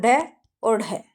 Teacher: उत्क्षिप्त व्यंजन ऐसे हैं जब हम इनका उच्चारण करते हैं तो जीभ हमारी झटके से ऊपर जाती है